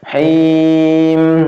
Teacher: Mim jangan langsung ditarik, jangan langsung hilang ya, tapi masih jalan dikit. Him, gitu, masih jalan dikit satu harokat ya. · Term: tawasud